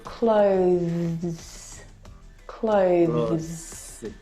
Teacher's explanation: need to bring your teeth through your tongue through your teeth now the th sound is very very soft it is definitely still there · it needs to sound different from the verb close okay which doesn't have the th sound this word has the th sound clothes clothes it's very short